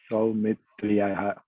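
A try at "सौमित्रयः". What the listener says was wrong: Saumitriyaha will not come. Saumitrayaha. He is replaced by Ayaha.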